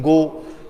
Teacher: Soft palate touches the tongue